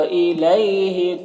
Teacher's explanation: इलई में यालीन से नर्म आवाज़ के साथ जल्द पढ़ेंगे